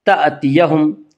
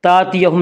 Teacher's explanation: حمزہ کو جھٹکے کے ساتھ پڑھیں گے، تأتیہم، تاتیہم نہیں پڑھیں گے بلکہ حمزہ کو جھٹکے کے ساتھ پڑھیں گے، تأتیہم، تأتیہم البینہ۔